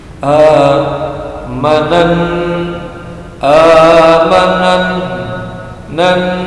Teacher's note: Gunnah musaddah, mendengung karena bertasdid. Panjangnya 2 harokat. · alif lamnya samsiyah, samar, karena langsung diloncati kepada huruf nun yang bertasdid